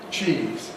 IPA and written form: ʧiːz (cheese)